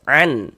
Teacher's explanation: Dikarenakan huruf Huruf izhar halqi, maka hukumnya izhar halqi. Karena dia izhar, maka dibaca jelas, tidak berdengung.